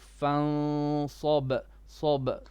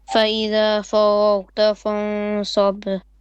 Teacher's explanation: the ikhfa here will be heavy because of sad